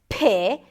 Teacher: The P is aspirated, so like I said, you can add a lot of air into it